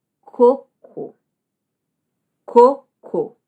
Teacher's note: A força da sílaba tônica está na segunda. E a mudança de sentido vai mudar.